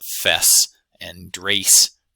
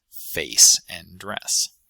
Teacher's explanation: something more like an A in dress and something more like an E in face. That would be fess and drace rather than face and dress.